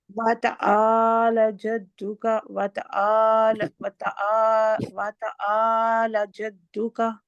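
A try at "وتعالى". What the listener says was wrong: وتعالی، لا کھڑی زبر، ایک سیکنڈ کے لیے.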